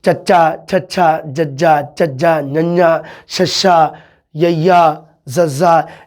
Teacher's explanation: ਉਹਨੂੰ ਚੱਚਾ, ਛੱਛਾ, ਜੱਜਾ, ਚੱਜਾ, ਨੰਨਾ, ਛੱਛਾ, ਯਈਆ, ਜ਼ੱਜ਼ਾ, ਇਹਨਾਂ ਨੂੰ ਜਦੋਂ ਆਪਾਂ ਬੋਲਦੇ ਹਾਂ ਤਾਂ ਸਾਡੀ ਜੀਭ ਹੈ ਜਿਹੜੀ ਉਹ ਕਦੀ ਜੀਭ ਦਾ ਅਗਲਾ ਪਾਸਾ ਜਾਂ ਜੀਭ ਦਾ ਜਿਹੜਾ ਵਿਚਾਲੜਾ ਹਿੱਸਾ ਹੈ ਉਹ ਸਾਡੇ ਉੱਪਰ ਤਾਲੂਏ ਨੂੰ, ਤਾਲੂ ਨੂੰ, ਪੈਲਟ ਨੂੰ ਛੂੰਹਦਾ ਹੈ, ਟੱਚ ਕਰਦਾ ਹੈ। ਉਸ ਨੂੰ ਕਿਹਾ ਜਾਂਦਾ ਹੈ ਜੀ ਤਾਲਵੀ ਧੁਨੀਆਂ।